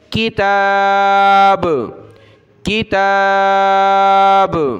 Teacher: جب رکیں گے وقف کریں گے تو با پر قلقلہ ہو جائے گا